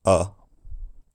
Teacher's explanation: Ellis transcribes the trap vowel in this Warwickshire accent as being surprisingly back